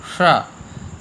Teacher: जिह्वा का जो वो अग्रभाग ऊपर की ओर ले जाएंगे और मूर्धा में वह लगेगा, वहाँ से वायु निकलेगी, श, तो उच्चारण होगा। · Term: मूर्धन्य सकार